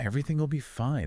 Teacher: everything often drops the G sound at the end, and then will be kind of blends together